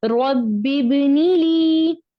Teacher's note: لی کو کھینچیں گے لیکن نی کو نہیں کھینچیں گے